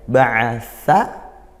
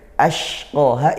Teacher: Ba'atha ashqaha, hati-hati huruf sa dan shin ya. Ba'atha, sa dari ujung lidah ke gigi, shin dari tengah lidah ke langit-langit atas. Dan hati-hati juga ba'atha itu ain, ashqaha itu hamzah.